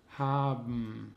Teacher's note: B wird zu M im Wort haben. Hier wird das E nicht ausgesprochen und manchmal ändert sich sogar der Konsonant.